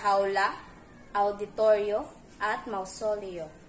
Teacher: Dapat pansinin ang nakagawi ang pagturing sa diptonggong ayo na katulad ng AO at ang kaugnay na panukala ni Rizal noon, ang ikalawang patinig ay pinatutunog na W